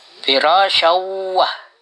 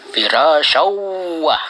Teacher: Cara membacanya diidghamkan atau dimasukkan tanwin ke waw atau ditasdidkan huruf waw. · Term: idgham bigunnah